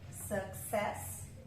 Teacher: Então, schwa no início, schwa no final, né? E olha, no success, a última sílaba que é a sílaba tônica, né? S, success.